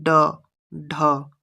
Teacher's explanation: याद रखिए, उत्क्षिप्त व्यंजन जिन व्यंजनों के उच्चारण में जिह्वा की उल्टी हुई नोक तालु को छूकर झटके से हट जाती है